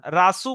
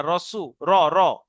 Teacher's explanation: রটা পুর করবেন, রাসু বলবেন না, রসু, র র। মুহাম্মাদুর রসুল্লাহ, এই সু টান দেবেন একালি।